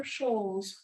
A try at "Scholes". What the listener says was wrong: Actually, Scholes. We pronounce the C.